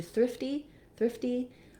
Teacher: our t turns into more of a d and then it's gonna sound more like thriff d